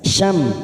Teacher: mim sukun idhar safawi kita baca jelas